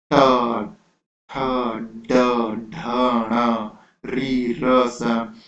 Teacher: तो आपका जो जीभ है वो आपके मुंह के अपर वाले पार्ट को, ऊपर वाले भाग को टच करता है, उसको हम बोलते हैं मूर्धा, ठीक है। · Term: मूर्धन्य वर्ण